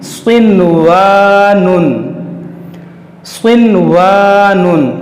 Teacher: स्वाद हुरूफ मुश्तालिया है, इसको हम मोटा करेंगे, और नून के बाद हुरूफ यरमलून है, वाव उसी कलमे में है, इसलिए यहाँ पर जो है यहाँ पर इदगाम नहीं बल्कि इजहारे मुतलक होगा, यानी इस नून को जाहिर करके पढ़ेंगे, गुन्ना नहीं करेंगे।